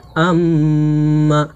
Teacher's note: এই মিম তাহজদিদকে নাকের মধ্যে গুনগুন করে কমপক্ষে এক সেকেন্ড বা এক আলিফ পরিমাণ টেনে পড়বো। যেমন আমমা হামজা জবর আলবে মিমের সাথে আম জবরমা আমমা এটাই হচ্ছে ওয়াজিব গুনা।